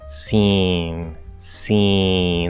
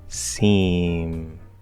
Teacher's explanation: it's just a little nasal because we're just relaxing that vellum that back flap in preparation to go into that nasal consonant sound